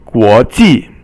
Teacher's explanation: The next one is second tone, guo, and then ji is fourth tone.